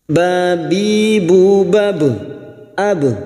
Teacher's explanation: ba sukun yang mati asli di tengah kalimat jangan lupa dipantulkan qqal sugro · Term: qalqalah sugra